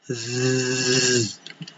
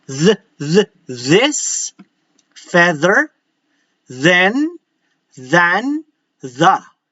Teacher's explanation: Notice that the position of my tongue is still in between those teeth, the sets of teeth, upper and lower portion, but instead of just letting the air come out, I'm vibrating the entire tip of the tongue. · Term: voice th